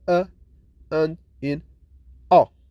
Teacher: lips are neutral when we produce the schwa